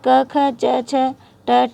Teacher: जिन व्यंजनों के उच्चारण में स्वर तंत्रों में कंपन नहीं होता है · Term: अघोष व्यंजन